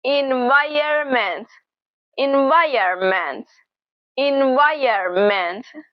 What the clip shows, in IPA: ɪn-ˈvaɪ-(y)ər-mənt